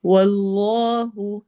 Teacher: واللہ واو میں ہونٹ گول اور اس میں جلالہ کلام موٹا ہوگا